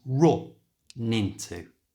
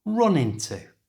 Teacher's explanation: we can join these two words together simply by moving the N from the end of run to the front of into so run into becomes R into and at normal speed run